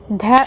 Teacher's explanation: दंती भी है, ध और महाप्राण भी है